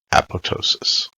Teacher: They specified the Greek use of the silent P with emphasis on the penultimate syllable.